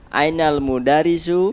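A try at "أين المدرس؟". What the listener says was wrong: Ya, mudarrisu. Ra-nya ditasdid.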